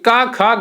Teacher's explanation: यहाँ आपकी कंठ से आवाज निकलती है। जो गले का नीचे वाला ज्वाइंट वाला हिस्सा है जहां पर आपका कंठ होता है, वो वहां से आपकी आवाज निकलती है।